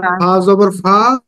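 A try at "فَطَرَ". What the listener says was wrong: ফাতর, টান হবে না কিন্তু, ফাতর, তাড়াতাড়ি বলতে হবে, ফাতর।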